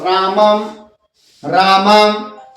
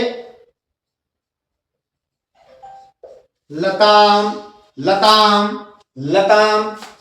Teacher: लेकिन संस्कृत भाषा में जो अनुस्वार है वो बोला जाएगा। किसकी तरह? ध्यान रखिएगा म की तरह।